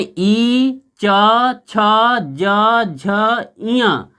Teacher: च से लेकर के यहाँ तक जो 5 च वर्ग में आते हैं जो कंसोनेंस जो व्यंजन, इसका उच्चारण स्थान तालु